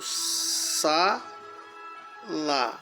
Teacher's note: Se for a penúltima, por exemplo, sa, lá. A sílaba forte é sa, é paroxítona